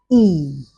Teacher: It is closed because the level of jaw opening moves to a more closed position. It is front because the um front part of the tongue is elevated. It is unrounded because while producing the sound e your lips are not rounded but are unrounded and also it is a long vowel. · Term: front vowel, vowel number 1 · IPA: /iː/